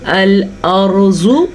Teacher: را ساکن سے پہلے زبر ہے تو ہم نے پڑھا را کو پر